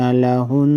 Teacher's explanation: वक़फ़ की सूरत में नून साकिन पढ़ा जाएगा